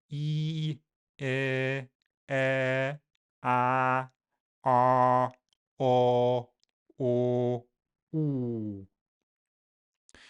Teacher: These are known as the primary cardinal vowels, with the last three made with rounded lips. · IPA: i e ɛ a ɑ ɔ o u